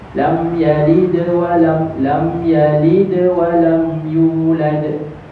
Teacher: Qalqalah tu ada, tapi dia tidak memberhentikan suara kita. Suara kita terus berjalan. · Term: qalqalah yang kecil